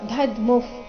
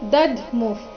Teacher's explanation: ಸರಿಯಾದದ್ದು ದಧ್ಮುಫ್. ಮೊದಲು ಪೂರ್ತಿ ದ, ಅದರ ನಂತರ ಅರ್ಧ ಧಕಾರ ಇದೆ